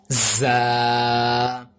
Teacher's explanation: ज़ा, यहाँ पर सीटी की आवाज़ निकालनी है